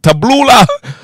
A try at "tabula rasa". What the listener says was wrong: You're adding extra syllables. Tabula rasa.